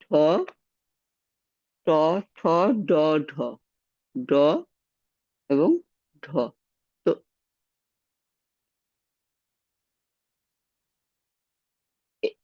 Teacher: এগুলো উচ্চারণের সময় জীভের সামনের অংশটা উপরে উঠে গিয়ে শক্ত তালুটা স্পর্শ করে এ ধ্বনিগুলো উচ্চারিত হচ্ছে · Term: তালব্যদন্তমূলীয় ধ্বনি